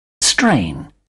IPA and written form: streɪn (strain)